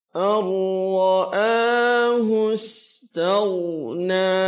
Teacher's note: Idgham artinya memasukkan bunyi huruf pertama ke dalam huruf kedua, yaitu huruf ra. Huruf nun seolah-olah tidak ada, langsung masuk ke huruf ra. Ar-ra'a, kemudian ra-nya tebal, kemudian a dua harakat. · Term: idgham syamsiyah